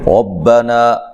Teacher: را کو خوب موٹا کر کے ادا کرنا ہے، را کے اوپر زبر ہو، را کو موٹا ادا کیا جاتا ہے۔